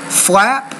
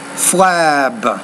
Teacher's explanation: the p is a voiceless consonant the B is a voice consonant